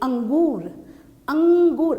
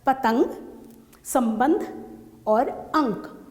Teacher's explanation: अनुस्वार है जिन वर्णों का उच्चारण करते समय ध्वनि जो है वो केवल नाक से निकलती है, सिर्फ नाक में। जैसे आपका ये देखिए अंगूर, अंगूर हम नाक से बोल रहे हैं यहाँ पर।